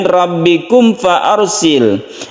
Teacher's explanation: ada mim bertemu dengan fa yang kita sebut dengan idhar syafawi, tidak didengungkan